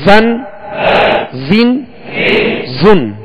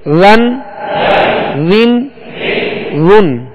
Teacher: زا کو سختی سے سیٹی کی آواز اس میں پیدا ہوگی اور ذال کو نرمی کے ساتھ ادا کریں گے. زا دو زبر زن، زا دو زیر زن، زا دو پیش زن، زن زن زن.